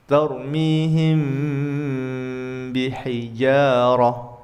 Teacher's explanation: Hukum bacaan yang kedua adalah ikhfa syafawi. Samar atau sedikit berdengung digunahkan. Ini apabila mim sukun bertemu huruf ba.